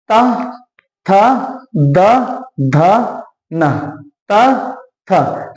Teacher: तो जीभ आपकी किससे टकरा रही है? दांतों से, इसीलिए इन्हें क्या कहा जाता है? दंत या दंत व्यंजन ध्वनि